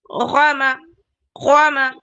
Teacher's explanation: میں تو غوامہ میں کیسا پڑھ رہی ہوں؟ میں اپر تھروٹ سے پڑھ رہی ہوں، وائبریشن کے ساتھ، گلگلنگ ساؤنڈ کے ساتھ، اور بولڈ پڑھ رہی ہوں